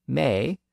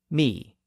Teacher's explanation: Great vow shift they moved slightly higher in the mouth so words that had been pronounced with an a sound started to be pronounced with an e sound The Vow was slightly raised but the spelling didn't really change